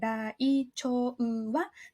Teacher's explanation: You'll notice that the チョ is one sound, but there's an extra う in there. So ライチョウは This is actually 5 beats.